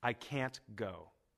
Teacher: both can't and the base form go are stressed